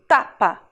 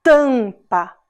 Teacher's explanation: o a junto com o m fez esse som nasal · o m perto da vogal no final da sílaba também faz o som nasal